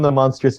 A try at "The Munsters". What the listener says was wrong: sounds like you're saying the monsters. The Munsters. it really maybe it's just your microphone. It really sounds like you're saying the monsters.